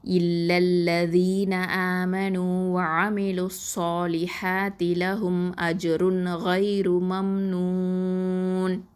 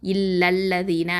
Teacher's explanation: இந்த ஃபஸ்ட் இதில் இல்லா அப்படிங்கிறதுல வந்து இதில் அலிஃபை வந்து நம்ம உச்சரிக்க மாட்டோம். அதாவது அலிஃப் மத்தை வந்து உச்சரிக்காமல் இல்லல்லதீன அப்படின்னு சொல்லி அந்த அடுத்த அல்லதீனில் உள்ள லாம் ஷத்தாவோட நம்ம இந்த லாமை வந்து இணைச்சிருவோம். லாம் ஃபத்தாவை இணைச்சிருவோம்.